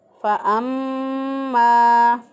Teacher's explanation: फ़अम्मा, मीम मुशद्दद पर हमेशा गुन्ना होता है। एक अलिफ के बराबर गुन्ना की मिक़दार को नाक में ठहराते हुए हम इसको अदा करेंगे।